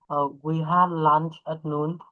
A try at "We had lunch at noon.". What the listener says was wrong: Good. All right.